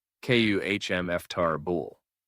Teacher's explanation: Notice how the middle syllables almost disappear. Instead of four clear parts, native speakers often squeeze it into three.